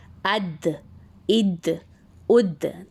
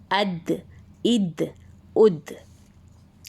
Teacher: ज़बान की नोक और ऊपर के दांतों की जड़ से अदा होता है, यानी टिप ऑफ द टंग को हम जो हमारे सामने के जो ऊपर के 2 दांत हैं उसकी जड़ यानी जो मसूड़ों के करीब जो हिस्सा होता है ना दांत का, वहाँ टच करते हैं और दाल दाल दाल की अदायगी होती है।